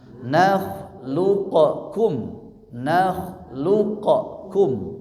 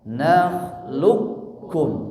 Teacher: Huruf yang mantulnya lebur ke huruf kaf, maka kafnya dikasih tasydid ya. Berarti kan kalau tasydid itu mewakili 2 huruf. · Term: idgham